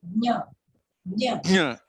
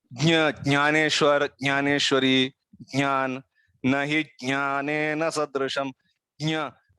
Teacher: there will be a significant stress on the nose while pronouncing that letter. If that stress is not there on the nose, means something somewhere is little bit wrong.